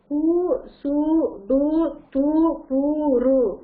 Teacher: இதுல பாத்தீங்கன்னா ஒரு மாத்திரை, தன்னுடைய ஒலிக்கக்கூடிய ஒரு மாத்திரை அளவிலிருந்து அரை மாத்திரை அளவாக ஒலிக்கக்கூடியது · நம்ம வந்து இதழ் குவிந்து ஒலிக்கக்கூடியதாக இருக்கும் குற்றிய லுகரம்